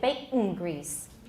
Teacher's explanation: we'll probably turn that alveolar nasal into a velar nasal